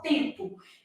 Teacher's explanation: Na palavra tempo, esse M é só nasal. Então, ao representar, vou representar assim, ó, tempo.